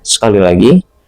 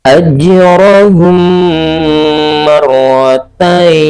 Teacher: ketika mim mati bertemu dengan huruf mim ini, kita membacanya dengan cara didengungkan [berdehem] dan kita tutup bibir serapat-rapat mungkin. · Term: idgham mimi